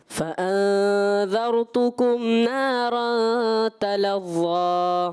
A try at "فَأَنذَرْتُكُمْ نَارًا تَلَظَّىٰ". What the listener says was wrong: تھوڑا اخفا کا غنہ اس کی ادائیگی جو ہے اور کلیئر کریں.